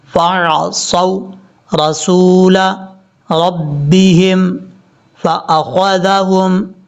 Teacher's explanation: صاد حروف مستعلیٰ میں سے ہے، پر پڑھا جائے گا. صاد کو جب واو سے کنیکٹ کریں گے تو واو لمبا نہیں کریں گے، یہ واو لین ہے، شارٹ کٹ پڑھا جائے گا